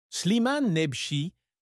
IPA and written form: sliman nɛbʃi (Slimane Nebchi)